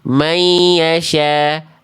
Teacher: Contoh yang salah ini, dia dibaca tergesa-gesa ketika lebur itu nggak ditahan.